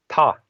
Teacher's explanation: It's sort of aspirated. You have a like you breathe out a little bit when you say it, and then that apostrophe is just a silent suffix that isn't pronounced at all.